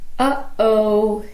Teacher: when you say uhoh in English you actually have two glottal stops one before uh and the other before o a gladle stop is just an Abrupt silence that you make · is just an Abrupt silence that you make by closing your throat